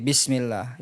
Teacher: kalau kasrah itu menyempitnya antara tengah lidah dan langit atas. Sehingga cukup kita baca ya letaknya itu di dalam.